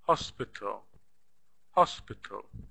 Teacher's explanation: the first syllable is stressed here hospital hospital notice that the last syllable we don't have any · notice that the last syllable we don't have any vowel sound it's just T without a without a but in the spelling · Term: stressed syllable